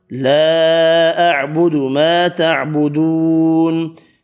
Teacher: چھوٹی مد 3 الف کی مقدار میں الف مدہ واو مدہ 1 الف کی مقدار میں کھینچ کر پڑھے